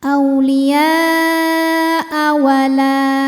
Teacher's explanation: hukumnya hanya mad wajib muttasil saja ya. Karena hamzahnya tidak dimatikan. Maka baca panjang boleh 4, boleh 5 harokat ya. · La hukumnya adalah mad tabi'i muqaddar, sebab lam berharokat fathah berdiri, maka lam panjang 2 harokat.